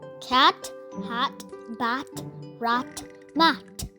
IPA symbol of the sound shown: æ